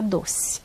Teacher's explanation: a maioria dos brasileiros acaba mesmo falando E como se fosse I.